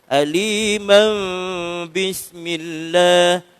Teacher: Bila nak baca mim, bila kita sambung dengan bismillah bawah. Jadi tanwin bertemu dengan ba, jadi iqlab. Baru jadi iqlab. Dengungkan iqlab tu.